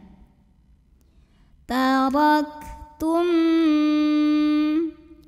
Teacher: dibunyikan secara tafkhim karena roknya ini berbaris di atas cara bacanya tebal pangkal lidah dinaikkan